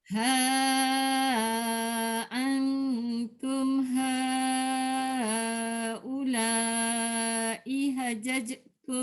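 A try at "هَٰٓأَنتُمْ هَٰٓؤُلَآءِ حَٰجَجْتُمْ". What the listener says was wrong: Ihajajtum. Iha, dia jangan ihajaj. Ha panjang. Bukan i yang panjang. Bukan iha. Iha.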